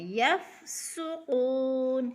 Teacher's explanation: قلقلہ میں سے نہیں ہے، جلدی جلدی ادا کرنا ہے، یفسقون، سین کو سیٹی کی آواز سے